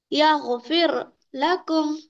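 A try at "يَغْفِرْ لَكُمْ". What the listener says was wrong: फिर, फिर, फिर बोले तो मोटा होगा, फिर लकुम। मैं इससे पहले आपको एक तरीका बताया था, देखिए बिल्कुल एक टेक्निक बताया मोटा और बारीक पढ़ने की। जब भी कोई हर्फ को मोटा पढ़ते हैं तो होंठ क्या होते हैं, गोल हो जाते हैं हमारे। इस तरह।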